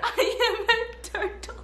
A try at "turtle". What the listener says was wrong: Why you stick your tongue out at the end? You didn't just stick your tongue out. Look at me, turtle. Turtle, there's no tongue.